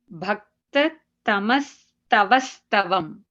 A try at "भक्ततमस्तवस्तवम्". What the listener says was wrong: Tava, not tavas. Tava stavam. Something, yeah, some letter you are missing there, yeah.